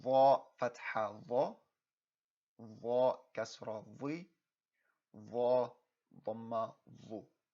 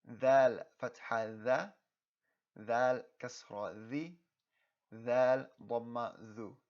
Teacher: And again, dha and dha, they have a very similar sound, but remember that dha requires you to have a more full mouth. Remember, your cheeks have to puff with air, whereas dhal is more of an empty mouth sound.